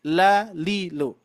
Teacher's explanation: Lam itu haknya dibaca tipis.